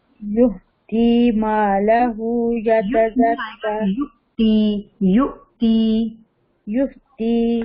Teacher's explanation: یؤتی جھٹکا ہوگا، ہا کی ساؤنڈ نہیں آئے گی کیونکہ وہ حمزہ ہے نا